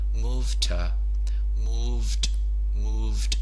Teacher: the D is lost